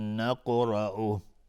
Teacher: قاف از حروف استعلاس و قلقله میخواد اینجا و را هم حکمش استعلاس چون فتحه داره.